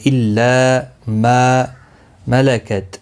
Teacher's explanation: لا الف مدہ ہے، ما بھی الف مدہ ہے، دونوں کو ایک ایک الف کی مقدار کے برابر کھینچ کر پڑھیں گے۔ ملکت، کسی بھی حرکت والے حرف کو کھینچنا نہیں۔